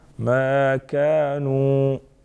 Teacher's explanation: ما الف مدہ، كانوا الف مدہ، ساتھ میں واو مدہ، دونوں کو ایک ایک الف کے برابر کھینچیں گے